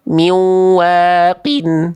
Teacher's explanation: Bukan tidak dengung. Ini tadi dia ada dengung loh. Miu itu ada dengung. Tapi kurang ditahan.